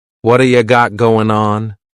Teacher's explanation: we're going to drop that G at the end of the word going